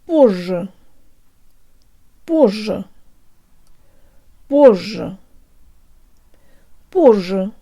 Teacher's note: Not позже with a short or shallow sounding zh, but with a longer and deeper one.